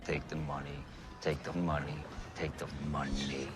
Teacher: is a little speculative but you notice the way he he presses that tongue tip in quite hard and lets a lot of pressure build up behind it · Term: t sound